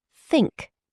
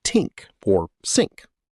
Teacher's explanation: >> To create that sound correctly, I have to gently push the tip of my tongue out between my upper and lower teeth and blow air out across it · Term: th sound